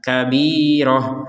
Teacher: huruf ta yang bulat ini dibaca sebagai huruf ha